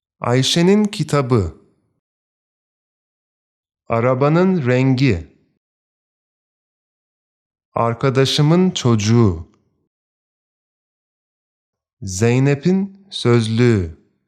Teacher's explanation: The p sound changes to a b, the ç changes to a c, the t changes to a d, and the k sound changes to either soft g or the g sound. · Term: consonant mutation